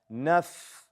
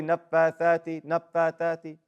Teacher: The fa, the letters of hams. Push out air.